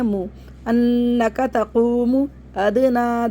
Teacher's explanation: دال ساکن پہ قلقلہ کریں گے. آواز پلٹ کے واپس آئے گی کیونکہ دال حرف قلقلہ میں سے ہے. ادنی، کھڑے زبر کو کھینچ دیں گے، یا ایکسٹرا اس کو نہیں پڑھیں گے.